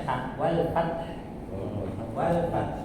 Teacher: Orang bisa jadi mendengarnya terakhir sepertinya huruf ta, tapi kita yang membaca harus sampai ha